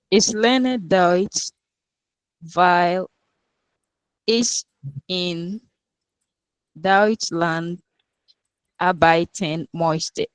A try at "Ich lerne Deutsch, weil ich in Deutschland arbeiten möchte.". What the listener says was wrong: Super. Deutschland arbeiten möchte. Okay. Super.